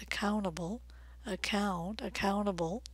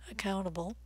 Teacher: notice the tea is very reduced it's actually silent